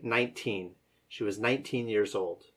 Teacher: The word 19 should have equal emphasis on both syllables.